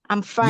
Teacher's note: I'm fine is down. Thank you is down. They are both falling tones, falling intonations.